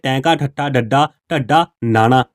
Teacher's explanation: ਉਲਟਾ ਹੋ ਕੇ ਉਹ ਕੋਮਲ ਤਾਲੂ ਨਾਲ ਛੂਹਦਾ · ਠਾ ਡ ਢਾ ਨਾਣਾ ਇਹ ਸਾਰੇ ਕੀ ਨੇ ਉਲਟ ਜੀਭੀ ਨੇ ਇਹਨਾਂ ਨੂੰ ਉਚਾਰਨ ਸਮੇਂ ਜੀਭ ਉਲਟਦੀ